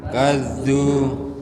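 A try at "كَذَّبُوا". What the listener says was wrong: Oh ini kurang naik. Wa kadzabu.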